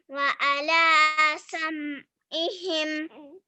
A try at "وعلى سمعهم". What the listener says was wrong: Okay, try to make the sam'ihim ain come here. Okay, sam'ihim. Try to make it ain.